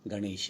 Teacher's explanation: कैसे हुआ? इसमें गण शब्द का अंतिम वर्ण अ है और ईशय शब्द का पहला वर्ण ई है, तो अ के बाद ई आ गई तो उसको हम ए कर दिया